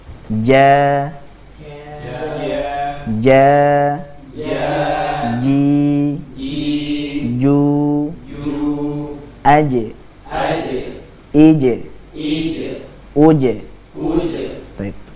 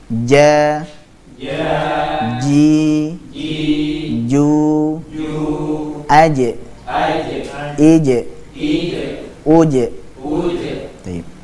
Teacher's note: Jadi huruf jim itu keluar dari tengah lidah dengan cara menempelkan pada langit-langit atas. Jadi dengan cara menempelkan tengah lidah tersebut pada langit-langit atas, sehingga makhrajnya betul-betul tertutup dengan sempurna.